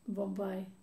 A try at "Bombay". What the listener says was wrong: A. Because you want to say I. And I want to say A, as in Opus Dei. Similar, no? Bombay.